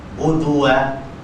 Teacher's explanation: Cantumkan bibir satu harakat untuk menyebut dal yang berbaris hadapan. Budua, dal tu buat satu harakat saja.